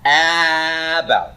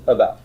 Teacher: what you're doing is you're reducing the vowel in order to get to the stressed syllable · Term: reduced vowel